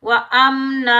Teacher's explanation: अलिफ मद्दा को एक अलिफ की मिकदार में खींच कर अदा करेंगे। व अमना यहाँ हम वक़फ़ करेंगे तो दो ज़बर की तनवीन में से एक ज़बर हटा देंगे और एक ज़बर के साथ अलिफ मद्दा में बदल कर पढ़ेंगे